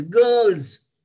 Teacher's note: So far as the sound T is concerned, it's voiced, followed by S. So S is not pronounced as S, S is pronounced as Z.